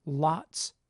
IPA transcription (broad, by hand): lɑts